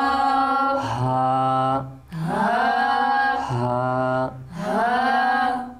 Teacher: এটা হচ্ছে কণ্ঠনালীর নিচের অংশ হা আর হামজা কণ্ঠনালীর নিচের অংশ